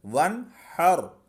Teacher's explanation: اب یہ جو نون ساکن تھا اس کے بعد حروف حلقی میں سے حا آ گیا، تو یہاں غنہ نہیں کریں گے۔ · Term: اظہار